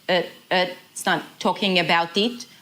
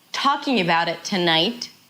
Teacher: So talking and tonight are important. About it is less important. So it's going to be fast and short and kind of reduced.